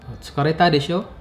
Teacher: The desho uses the rising intonation.